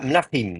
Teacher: le im prend l'accent